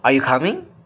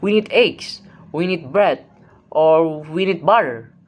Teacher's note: The pitch moves upward, it signals incompleteness. Something is open, a response is expected. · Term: rising tone